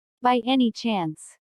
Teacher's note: notice the rising intonation which is used in yes no questions to confirm that something is true